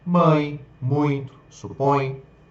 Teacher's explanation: Já ditongos nasais, eles são pronunciados parcialmente pelo nariz.